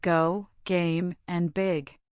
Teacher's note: The hard G is a voice sound made by raising the back of your tongue to the soft pallet, briefly stopping the air, and then releasing it with voice.